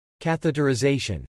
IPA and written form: kæθətɹ̩ɪzejʃən (Catheterization)